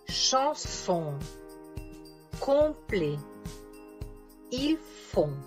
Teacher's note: la bouche devient ronde, les lèvres arrondies et la langue relevée en arrière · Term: la voyelle on